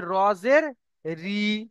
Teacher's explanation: আর যদি নিচেই জের আসে তাহলে বারিক হবে, অর্থাৎ মুখ লম্বা হবে, রজের রি। দেখেন রি কে বলে, দেখেন মুখ লম্বা হয়ে যাচ্ছে।